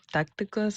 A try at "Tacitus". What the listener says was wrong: Well, you're putting some of those consonants where they don't belong, but anyways, Tacitus.